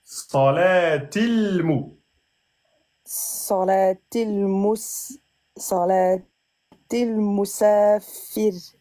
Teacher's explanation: il faut que tu fasses un temps et demi sur le lem pour que tu puisses enchaîner.